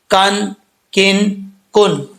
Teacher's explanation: हिस्से से लगेगी जुबान की जड़ तो यह का पड़ा जाएगा जुबान की जड़ ऊपर वाले तालू का सखत जो हिस्सा है उसके साथ लगेगी तो काफ पड़ा जाएगा जैसे का काफ काफ दो जबर कन काफ दो जर किन